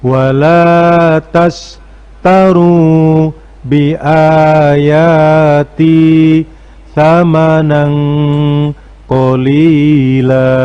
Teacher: Yang perlu diperhatikan pada bagian ini ada bacaan ikhfa. Jadi ucapan atau perkataan samanan, nan di situ karena bertemu dengan huruf qaf maka dibaca ikhfa. Bunyinya menjadi samanang, beri suara eng.